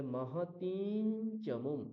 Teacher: বর্গে কি কি বর্ণ আছে চ ছ জ ঝ ন তাহলে চ বর্গের যে পঞ্চম বর্ণ নকার সেটাই অনুস্বার অনুস্বারের জায়গায় উচ্চারিত হবে